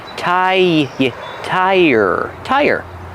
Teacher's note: When we link these sounds, we use the y sound like yes and yesterday.